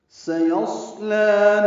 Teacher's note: سین کو صفیر کی آواز سے جلدی پڑھیں گے، تیز سیٹی کی آواز ہوگی